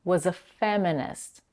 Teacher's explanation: Was-a is also shorter, was-a, while the following word, feminist, is stressed, was a feminist. The last T in the word feminist is held and not released. You can do this by only putting the tip of the tongue behind the upper teeth, but not releasing the air while pronouncing the sound.